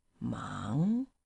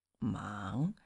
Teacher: And that's the rising tone, isn't it? That's right, going up